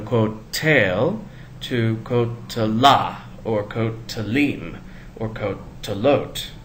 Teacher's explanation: that new ending draws the accent away from the syllable with the tsere